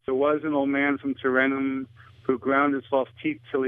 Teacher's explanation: one example is the dropped H in the pronouns his him and he